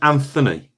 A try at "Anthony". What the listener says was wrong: I thought you pronounced the H then, which was You might. Anthony might pronounce the H, but I don't like. I think it's a silent H.